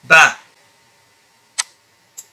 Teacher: By firmly keeping your lips closed first and then opening them, and at the same time bringing out a voice.